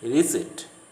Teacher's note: The P should not be pronounced.